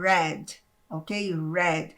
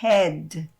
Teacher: Então, aqui, esse R, ele não é esse R do refrigerante, do restaurante, não é esse R arranhado, ele é um R bem dobrado, você vai pronunciar fazendo red, ok?